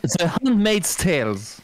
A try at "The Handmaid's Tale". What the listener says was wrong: C'est Tails sans S, hein, c'est Tail, c'est pas Tails. T'as dit Tails.